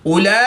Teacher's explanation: کھڑی زبر کے بعد حمزہ اسی کلمے میں ہے تو یہاں پر مد متصل ہوگی، 3 سے 5 الف تک کھینچ کر پڑھیں گے